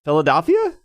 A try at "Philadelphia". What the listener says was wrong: You keep saying Del. Think of the Wisconsin Dells. That you want to fill with water. Philadelphia.